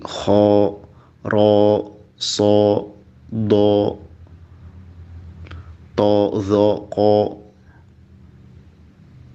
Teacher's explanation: Kalau harokat fathah bunyinya jadi o, seperti kho, ro, so, do, to, zo, ko. Nah, itu huruf tebal.